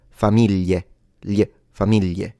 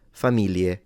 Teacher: Or you pronounce it in the southern way, which is a Y, famiglie, famiglie, with a Y. Or you pronounce it the northern way, which is an L